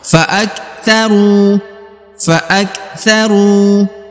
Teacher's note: huruf Ru di sini dibaca Dua harakat karena di depannya terdapat wau sukun atau wau mati